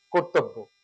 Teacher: অর্থাৎ ব এর সাথে জফলা আছে বটা দুইবার হবে